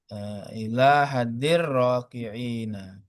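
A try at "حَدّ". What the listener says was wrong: Hada Ustaz bukan zal. Hada. Ila hada. Hada. Hada. Ha dan dal. Oh, hadi. tasdidnya ya.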